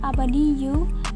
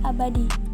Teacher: hasil serapan dalam bahasa Indonesia yakni abadi yang berasal dari bahasa Arab abadiyu, terjadi kasus penghilangan bunyi yakni bunyi yu